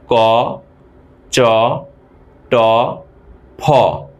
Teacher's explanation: এখানে ফ থেকে বেশি বাতাস নির্গত হচ্ছে। সুতরাং ফটা হল মহাপ্রাণ ধ্বনি।